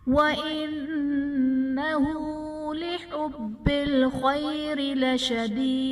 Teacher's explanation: انہو میں نون مشدد ہے، یہاں پر غنہ کریں گے۔ لحبل میں با حرف قلقلہ مشدد ہے، یہاں پر قلقلہ خوب جماؤں کے ساتھ ادا کریں گے۔ خیری میں خا حرف مستعلیہ ہے، پر پڑھا جائے گا، را کے نیچے زیر ہے، را کو باریک پڑھیں گے۔ · خیری میں خا حرف مستعلیہ ہے، پر پڑھا جائے گا، را کے نیچے زیر ہے، را کو باریک پڑھیں گے۔ لشدید میں یا ساکن سے پہلے زیر ہے اور وقف کی صورت میں دال ساکن ہو جائے گا، یہ حرف قلقلہ ساکن ہوگا تو یہاں پر قلقلہ خوب ظاہر کریں گے، اور وقف کی صورت میں مد عارض کا قاعدہ ہوگا۔